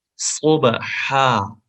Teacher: وسل کے ساتھ ساتھ آپ کو اس کو موٹی آواز میں پڑھنا ہوگا تاکہ یہ سین سے بھی جدا ہو جائے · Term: وسل ساؤنڈ